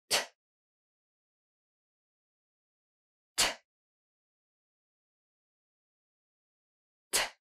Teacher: It's voiceless. You're not using your voice, no vibration in your throat. You're just going to push out some air. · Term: T sound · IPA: /t/